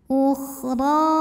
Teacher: Kemudian huruf ra dibunyikan secara tafkhim karena ra berbaris di atas. Maka dibacanya tebal ya, pangkal lidah naikkan.